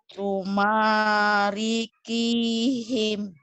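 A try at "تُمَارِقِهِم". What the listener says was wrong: Bukan ki tapi titiknya satu.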